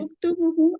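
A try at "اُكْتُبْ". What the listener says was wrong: उक्तुब उक्तुबू नहीं है, उक्तुब है। उक्तुब है।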